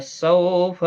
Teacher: سو واولین ہے، نرمی کے ساتھ آدھے الف کی مقدار کے برابر کھینچیں گے